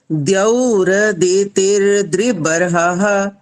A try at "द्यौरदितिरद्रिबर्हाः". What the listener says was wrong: तेर जो बोल रहे हो ना, तेर यहाँ पर यहाँ पर अलग गलत होता है। ते रद्रि बरहा। तेर बोलोगे तो गलत हो जाएगा।